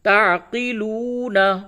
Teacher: واو ساکن سے قبل پیش ہے، اس واو کو، یہ واو مدہ ہے، اس کو تھوڑا سا کھینچ کے پڑھیے